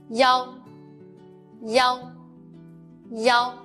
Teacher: Let's learn the final ya together in this class. Make the e sound, then quickly switch to the ow, yow. When yow becomes a syllable by itself, it should be written as yow with the same pronunciation. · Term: final yow